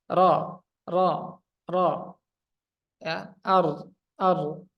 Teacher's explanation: ini sifatnya jahar napasnya tertahan